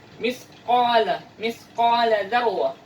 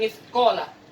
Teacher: qaf itu lebih ke dalam tenggorokan ya. Jadi kita menyebutnya seolah-olah kalau kita menelan.